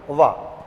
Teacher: इसके उच्चारण के लिए आपको दंत की और ओष्ठ दोनों की आवश्यकता पड़ती है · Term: दंतोष्ठ व्यंजन